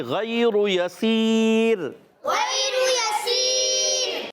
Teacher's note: اور دو زیر کی تنوین ہے آخر میں، وقف کی صورت میں را باریک ہو جائے گی · یسیر میں یا پر زبر ہے، سین یا زیر سی، یا ساکن سے پہلے زیر، یا مدہ ہے، عرف مدہ کو ایک الف کھینچ کر ادا کریں گے